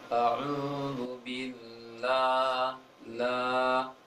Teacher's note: Pada kalimat ta'awudz, a'udzubillah, agak miring, ke E, pengucapan Allahnya seharusnya ke A.